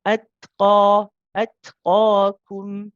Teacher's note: The qaf has the mad alif with it, it's got the mad tabi'i, so this will be stretched for 2 counts